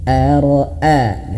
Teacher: Ara'ai tidak, tapi harus ada sedikit hentakan. Sedikit ada hentakan agar pelafalan huruf hamzahnya lebih jelas.